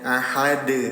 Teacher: Ketika dalnya disukunkan terjadi hukum tajwid yang namanya qalqalah. Pantulkan cara bacanya